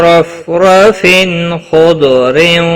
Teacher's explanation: تنوین کے بعد حروف حلقی کا خا آیا ہے، اظہار حلقی ہوگا، گناہ نہیں کریں۔ خا اور ضاد حروف مستعلیہ میں سے ہے، پر پڑے جائیں گے، ضاد ساکن کو ہلانا نہیں۔